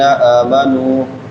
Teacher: حمزہ کے اوپر کھڑی زبر ہے اس کو ایک الف کے برابر لمبا کریں